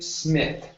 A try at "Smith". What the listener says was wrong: you're pronouncing a t you're saying SMI okay this is a th at the end